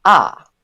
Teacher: a high fall, yeah, generally like the Mandarin fourth tone and the Hokkien that high falling tone is noted as 5-1, so just all the way through